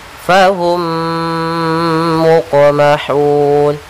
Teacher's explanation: Yaitu cara membacanya, mim yang pertama masuk kepada mim yang kedua, kita tahan gunnahnya. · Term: idgham mimi